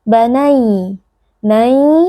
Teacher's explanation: ada lin karena ya sukun sebelumnya berharakat fathah, huruf ya sukun dibaca dengan lunak